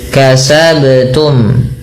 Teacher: Perlu dipantulkan karena ia ada bacaan qalqalah. Kasabtum. Kita ulang.